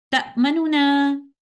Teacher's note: پہلے والے نون کے ضمہ کو 2/3 حرکت کے ساتھ اظہار کرتے ہوئے پڑھا جاتا ہے